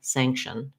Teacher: vowel there you can think of it as shun or shin we just want to move very quickly from the sh sound to the n sound